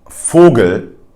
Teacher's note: in words like Vogel, which is bird in German, it is pronounced as an F, as you can hear.